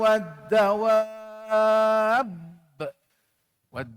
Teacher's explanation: mad lazim kena baca dengan enam